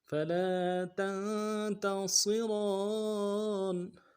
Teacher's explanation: لا کے ساتھ الف مدہ ہے، ایک الف مدہ بھی کھینچیں گے